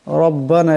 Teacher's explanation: এখানে রার উপর জবর আছে, এই রার আওয়াজটাকে মোটা করিয়া পড়তে হবে